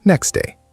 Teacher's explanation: In slow speech, next day. But in fast speech, the T often disappears. It sounds like next day. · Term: elision